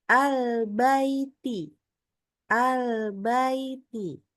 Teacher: Lin itu artinya lunak membacanya dengan lunak antara fathahnya dengan ya sukunnya Baiti dan sama panjang kadarnya antara fathahnya dengan yanya albaiti jangan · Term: huruf Lin